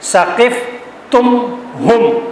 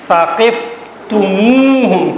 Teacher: ثقفتم ہم یوں ہونا چاہیے تھا، لیکن عربی زبان والے اس لفظ کو آسانی کے ساتھ ادا کرنے کے لیے ہم سے پہلے واو کا اضافہ کر دیتے ہیں